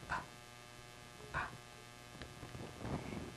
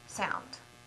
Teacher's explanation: p is our quiet lip popper